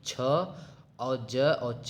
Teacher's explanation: छ और ज और च ये तीनों ताल से बोले जाते हैं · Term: तालव्य